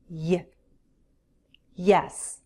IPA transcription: y